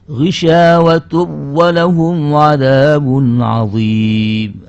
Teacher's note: dibaca dengan idgham tanpa disertai gunnah